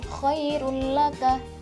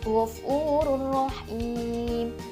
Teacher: ada mim sukun atau tanwin bertemu dengan huruf lam dan rok cara membacanya dengan memasukkan tanpa berdengung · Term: idgham bilagunnah